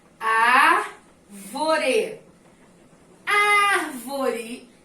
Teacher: A é a sílaba mais forte de toda essa palavra aqui. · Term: proparoxítona